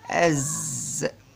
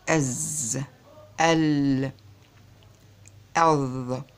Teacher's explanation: بالنسبة للجهر بتهتز اهتزاز وبينحبس النفس، بيهتز الأوتار الصوتية وبينحبس النفس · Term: الجهر